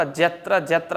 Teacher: ಯತ್ರ ಯ ಅಂತ ಹೇಳಲಿಕ್ಕೆ ಜ ಬಳಸುತ್ತಾರೆ